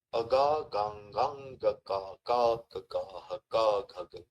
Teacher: all the sounds which are there, so they are produced from the first position, the sthana, kanthya sthana. Okay, they are kanthasthana, they are called the kanthya varnas.